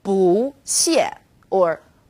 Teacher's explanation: when bu is used before another fourth tone it becomes second tone